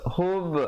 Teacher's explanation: hub ada qalqalah sughra di situ, berikan pantulan.